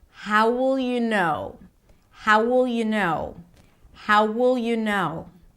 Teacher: An entire phrase, how will you know, is pronounced as if it's one word. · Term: Connected speech